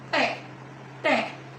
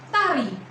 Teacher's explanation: di belakang gigi pada baris pertama kolom alveolar ada alveolar proses yaitu letak lidah di belakang gigi dan ada letupan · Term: alveolar plosif